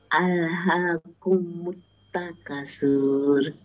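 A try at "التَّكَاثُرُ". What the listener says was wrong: K-nya dua, tambahi Bu, tambahi panjangnya. takasur. Takasur.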